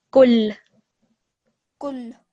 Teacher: try to stress the lam a little bit because it's got the shadda